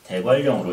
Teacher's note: 앞에 니은 뒤에 리을 때문에 리을 발음으로 변하는 현상이다.